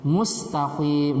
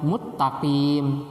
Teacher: Contohnya tadi mustaqim dibaca muttaqim. Sin diganti dengan ta dan ta-nya dibaca idgham.